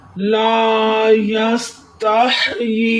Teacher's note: 4 second तक खींच कर पढ़ेंगे।